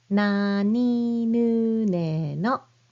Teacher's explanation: start with the N sound just like English N, but you press your tongue right behind your front teeth